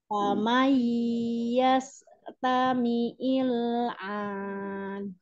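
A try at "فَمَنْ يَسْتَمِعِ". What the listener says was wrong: Huruf ain disempurnakan makhrajnya.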